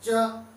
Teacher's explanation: उसके बाद में अगर बात की जाए तालुब्य, तालु से हमारी जीभ के जस्ट ऊपर वाला बिल्कुल भाग जिसको हम तालु बोलते हैं। च, हमारी जीभ हर बार तालु में चिपक जाती है।